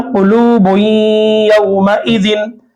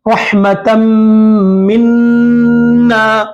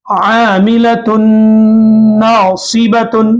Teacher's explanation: नून की आवाज को नाक में घुमाते हुए बात के हर्फ में मिलाना है। इसको इदगाम माल गुन्ना कहते हैं।